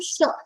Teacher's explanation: Tesha, cerebral sha has come.